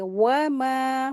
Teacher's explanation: वाव के लिए होंठ को गोल करते हैं और अच्छे से अदा करेंगे।